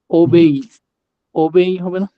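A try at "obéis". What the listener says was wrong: ওবেই, এক্স কিন্তু sound আসবে না, এসটা ওবেই।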